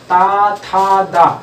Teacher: दांत से जो है जीभ जो है दांत में टकरा रही है, दांत से टकरा।